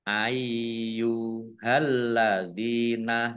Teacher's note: Ayyuhalladzina, lamnya dibaca double, ada tasdidnya, dzal kasroh ya sukun mat tobi'i panjang 2 harokat